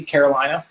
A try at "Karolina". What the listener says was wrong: No, Karolina. Karolina, yeah. Not like the States in the U.S. Not like the States in the U.S.